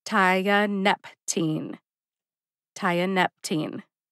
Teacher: The third syllable, nep, gets the emphasis.